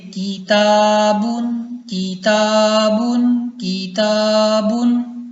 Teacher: کیونکہ الف سے پہلے باریک حرف ہے تا، تو الف باریک پڑھا جائے گا.